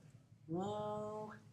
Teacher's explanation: Obstruction is by rounded lips and tongue elevated to the velum. They are semivocalic or semivowels, and they are voiced.